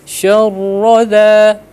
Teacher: Syarra di ra, ini perlu diperhatikan ya. Ra itu ketika dia fathah dan dhammah dia tafkhim, tebal ya. Syarra. Nah, jadi ketika dia ada tasydid atau syiddah, jangan sampai ada syarr gitu ya.